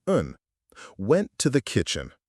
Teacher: The word and was probably very small and quick, more like un